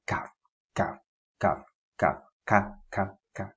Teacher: kaf is a little bit ahead, so it doesn't come out as cough